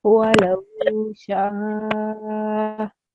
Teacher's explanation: the sheen sound needs to be prolonged